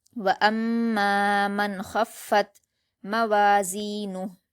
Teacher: فا پر زبر کی حرکت ہے اور تا پر جزم ہے تو فا کو تا سے ملا کر پڑھیں گے اور تا پر قلقلہ نہیں کریں گے